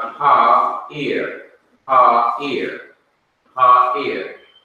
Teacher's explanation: And this is the r sound, at the end, ear. The ayin is not being pronounced at all. · Normally you would have a patak, a short a, but because of the guttural letter and it cannot be doubled, the patak has to be lengthened to its corresponding long vowel, kamis a, which is a long a sound